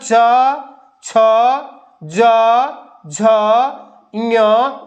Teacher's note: इन सभी वर्णों का उच्चारण कहां से होता है ताल से यानी जीवा जो है ताल से स्पर्श करती है